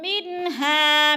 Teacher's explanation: انہار، ہا کے اوپر کھڑی زبر ہے، اس کو کھینچ کر منہ الانہار منہا، من پہ بھی اظہار ہے، نون ساکن کے بعد ہا حروف حلقی میں سے ہے، منہا کی تو اظہار، ہا کے اوپر الف مدہ ہے، الف مدہ کو بھی ایک الف کے برابر کھینچ کر پڑھنا ہے